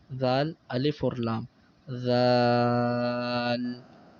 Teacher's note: زبان کی نوک اوپر والے دانتوں کے کنارے سے جب لگے گی تو زال ادا ہوگا نرمی کے ساتھ